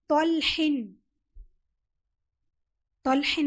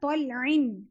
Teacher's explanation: ہا کی جگہ عین، ہم مخرج ہے نا ہا اور عین، طلعن، ٹھیک ہے.